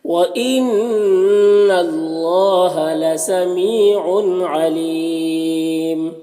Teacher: तनवीन में इज़हार हकीकी हो रहा है क्योंकि आइन आ रहा हुरूफ हल्के में से, तो इसे जल्द पढ़ना है। और अलीम यहाँ पर या मद्दा है, वक्फ करेंगे तो मीम की दो पेश की तनवीन सुकून से बदल जाएगा तो फिर मद्दे आरिज़ वक्फ़ी होगा, तो इस तरह से पढ़ेंगे।